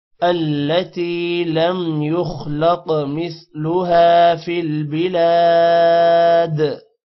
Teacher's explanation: خا بھی موٹا ہوگا اور قاف بھی موٹا ہوگا اور قاف پر قلقلہ بھی ہوگا